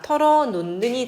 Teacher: 히읗이 니은의 영향을 받아서 니은으로 바뀝니다. 털어놓는이 되겠습니다.